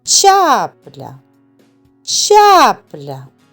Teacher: Ставимо наголос над першим звуком а.